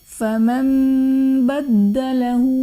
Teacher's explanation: فمن بدله میں نون ساکن کے بعد حرف با آ رہا ہے تو نون ساکن کو میم سے بدل کر اخفا کریں گے، یعنی غنہ کر کے پڑھیں گے تو یہاں پر اقلاب کا قاعدہ ہوگا۔ بدلہ میں دال حرف قلقلہ مشدد ہے تو یہاں پر قلقلہ خوب جماؤ کے ساتھ ادا کریں گے